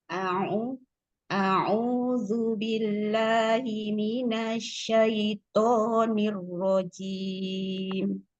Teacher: Di a'udzu, agak cepat hamzahnya ketemu ain. A'udzu, a-nya tidak panjang.